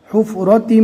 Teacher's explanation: یہاں پر آپ دیکھ سکتے ہیں وہی کلر ہے، یہاں پر بھی ادغام باگنہ ہوگا، ملا کر گنہ کے ساتھ پڑھیں گے، تا کو میم سے ملانا ہے